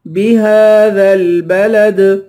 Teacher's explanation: آخر میں دال ہے، دال کو قلقلہ کے ساتھ پڑھیں گے